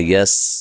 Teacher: سین کو باریک سیٹی سے ادا کرنا ہے، یس، لیکن سین کو ہلانا نہیں ہے۔